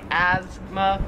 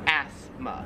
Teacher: america we call it asthma and in australia it's pronounced asthma we kind of say it more like a z sound like asthma where here it's more like a like an s sound like asma